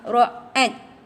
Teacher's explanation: Ra sifatnya tafkhim, dan jika kita wakaf ada sifat hams ataupun hamas